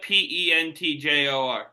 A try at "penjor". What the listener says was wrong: It's pronounced penjor. No. there's really not a T in that.